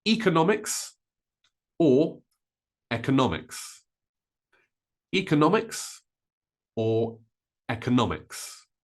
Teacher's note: Notice that I stress the no.